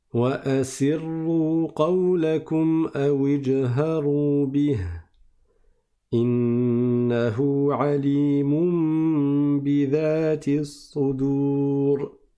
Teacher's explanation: C'est un ra qui est mufakham, il est emphatique. Et donc, on met, on le récite de façon grave. C'est pour ça qu'il est en bleu.